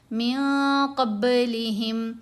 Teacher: نون کو ناک میں چھپا لیا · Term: احفا